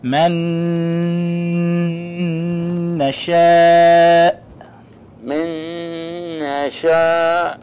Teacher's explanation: the ghunnah, the sound that comes out of the nostrils. So we say man nasha.